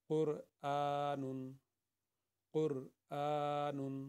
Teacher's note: یہ حمزہ جو ہے اس کے اوپر کھڑی ہے تو یہ 2 حرکت کے برابر یعنی کہ 1 الف کے برابر پڑھا جائے گا۔